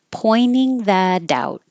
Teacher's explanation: It's okay if you do, if you say pointing, but the N and T, when the T comes after the N and the T is in the unstressed syllable, you can just put your tongue in the in position, pointing, and just skip the T.